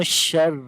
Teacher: تو اس وقت جو ہے وہ اخفا کی آواز آئے گی. میو شر، را کو باریک پڑھیں گے، را کے نیچے زیر ہے اس وجہ سے. واو کو لمبا کریں گے، الف مدہ ہے، الف سے پہلے زبر آ گئی واو کے اوپر، لمبا کریں گے ایک الف کے برابر.